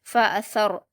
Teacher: سا کو را سے ملا کر را ساکن کو پر پڑھیں گے